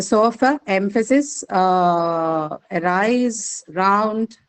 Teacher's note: these are all examples of the vowel sounds with the unstressed vowel sound schwa